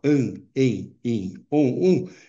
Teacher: quando nós pronunciamos a vogal nasal, an, em, in, on, é um fonema só, é uma vogal nasal. Porém, quando nós escrevemos, nós usamos duas letras. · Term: vogais nasais